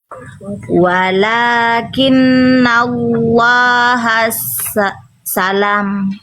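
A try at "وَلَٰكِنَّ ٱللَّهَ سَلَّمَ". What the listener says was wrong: Sinnya enggak ada tasdid, jangan ditekan. Enggak ada tasdidnya.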